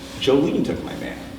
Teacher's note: Imagine person A says, "Who took your man?" and person B says, "Jolene took my man." So we all have the intuition that Jolene is going to be probably the most prominent thing in that sentence, and it has to do with the fact that it's an answer to the question in A.